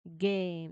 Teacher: you start with a tongue-to-palate seal. You turn your voice on and then you pop the air out into the long A vowel sound